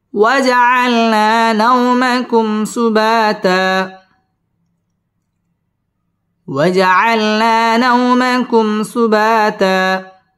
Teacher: নাও জবরের বাম পাশে জজম ওয়ালা ওয়াও লিনের হরফ তাড়াতাড়ি পড়তে হবে